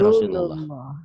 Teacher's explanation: Lafaz Allah dibaca tafkhim tebal berbunyi O Allah seperti bunyi O bila didahului oleh huruf yang berbaris patah atau domah.